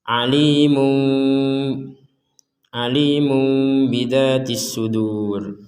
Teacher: Jadi membalikkan tanwin atau nun menjadi mim.